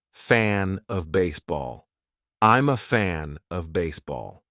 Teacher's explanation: And they would connect fan with the next phrase, fan of baseball.